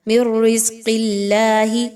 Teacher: قاف موٹی، حرف جلالہ اللہ باریک